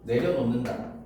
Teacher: 히읗이 니은을 만나면 히읗 혼자서 디귿으로 바뀌거든. 그 이후에 비음화가 일어나는 거고.